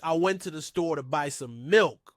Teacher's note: The stressed words here are went, store, and milk. The other words like to the, and some are unstressed and are spoken more quickly.